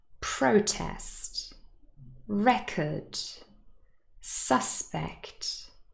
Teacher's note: with the nouns the stress is on the first syllable